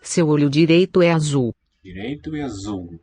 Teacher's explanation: With the dark L vocalizing.